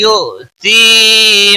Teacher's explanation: हमजा साकिन है, इसलिए थोड़ा झटके के साथ अदा करेंगे, यू नहीं पढ़ना है।